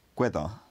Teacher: the vowel loses the nasal quality and just becomes a normal oral vowel